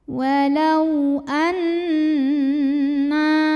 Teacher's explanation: Cara bacanya dengung, bunyi n-nya tahan sampai ada getaran halus ke hidung kurang lebih 2 harokat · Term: gunnah musyaddadah